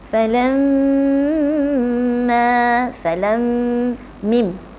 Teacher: mim ialah dua bibir yang dirapatkan secara ringan.